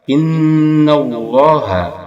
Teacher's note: Innallah, ada nun bertasydid. Ini hukumnya apa? Gunnah. Dia dibaca berdengung 2 harakat.